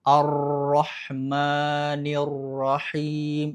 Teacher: getarannya berlebihan ketika mengucapkan ro bertasydid. Ar-Rahmanir-Rahim, itu lebay, getarannya terlalu banyak.